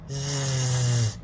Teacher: you have to make the S sound, but use your voice as well. Use here, so you can put your fingers outside, here on your neck, and then you feel that it is vibrating, moving very quickly.